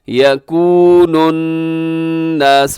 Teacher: یکون الناس نون مشدد پہ غنہ ہے